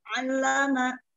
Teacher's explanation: lamnya jangan ke hidung